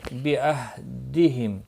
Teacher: میم ساکن کے بعد حمزہ آیا ہے، اظہار شفوی ہوگا